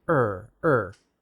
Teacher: have a bit of an accent with r because in chinese your r is made further back in the mouth that is the tongue is curled further back